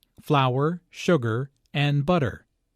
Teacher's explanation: Notice that this is a list, so there are short pauses between each item. Notice also that each ingredient is stressed because this information is important.